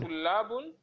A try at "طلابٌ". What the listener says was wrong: طلاب تنوين